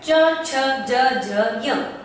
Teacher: इनका उच्चारण करते समय हमने पाया कि ये हमारे तालव्य भाग को स्पर्श करते हैं, तो इन्हीं वर्णों को तालव्य कहा जाता है।